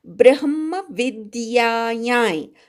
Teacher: यावरच्या अनुस्वाराचा य असा नाकातनं यचा उच्चार करायचा